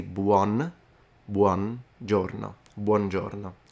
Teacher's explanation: I noticed that a lot of people tend to skip the U in Italian in this case. But it is pronounced